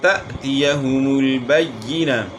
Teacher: حمزہ ساکن میں تھوڑا کیا کرنا ہوتا ہے، اس میں جھٹکا ہوتا ہے، تأتیہ پڑھنا، تأتیہ نہیں پڑھنا، تأتیہم البینہ۔